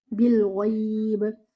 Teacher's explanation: You will give your ba a sukoon, and you will also give do qalqala on your ba